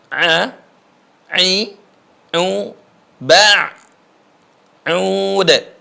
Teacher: Kemudian huruf ain, perhatikan. Keluarnya di tengah tenggorokan atau suara dalam.